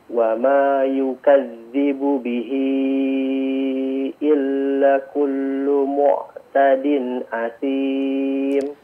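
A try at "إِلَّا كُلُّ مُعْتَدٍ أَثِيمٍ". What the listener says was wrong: Illa kullu ya. La-nya dua harakat. Illa kullu mu'tadin.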